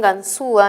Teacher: La U y la A. Y la que suena más es la U, ese es un hiato acentual.